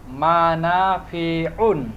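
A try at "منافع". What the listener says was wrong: মানাফিউন, তবে টেনে বলা যাবে না, মানাফিউন না, মানাফিউন বলেন সবাই, মানাফিউন। হরকতের উচ্চারণ কেমন করে করতে হয়? তাড়াতাড়ি করতে হয়।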